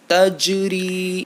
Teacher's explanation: یہاں پر ایک الف کے برابر ہمیں را کو کھینچنا ہے